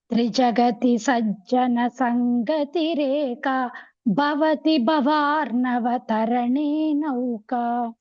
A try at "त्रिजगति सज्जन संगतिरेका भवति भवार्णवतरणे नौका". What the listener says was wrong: இந்த பவதி பவார்ணவ அது மட்டும் கொஞ்சம் இந்த ப கொஞ்சம் பிராக்டிஸ் பண்ணுங்க.